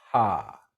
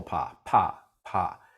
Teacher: those vocal cords don't start vibrating until just after my lips are released from each other, right after they open up, when my lips open up. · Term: puff of air